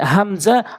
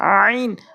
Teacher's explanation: হামজাটা হলকের শুরু থেকে আর আইনটা হলকের মাঝখান থেকে